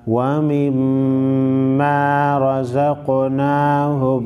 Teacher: میم مشدد کو غنہ کریں گے